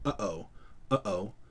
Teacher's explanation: Basically what that means is there's part of your throat that's called a glottis, and that glottis closes off the air that's trying to pass through your throat. And when you release the glottis to let air pass through, it's kind of like releasing your lips in the p sound. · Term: glottal stop